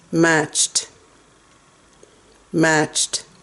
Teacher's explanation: Don't say the first T. That T is silent.